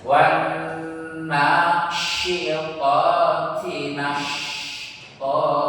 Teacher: lepaskan tafasyi, ya, lepaskan tafasyi, desisnya itu menyeluruh di seluruh rongga mulut